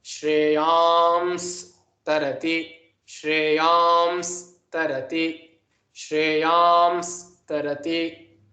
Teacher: And Na, because it is an Anunasika, it changes to an Anuswara. So it becomes Shreyams Tarati, Shreyams Tarati, Shreyams Tarati.